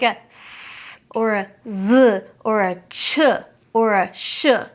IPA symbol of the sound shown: z, s